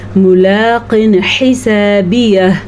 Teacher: मोटा क़ाफ याद से अदा कीजिएगा, ऐसा ना हो कि आप इसको पतला काफ पढ़ लें। कुछ तो फ़र्क होना चाहिए, बेशक हल्का फुल्का सही फ़र्क हो, लेकिन मोटे काफ और बारीक काफ में फ़र्क होना चाहिए।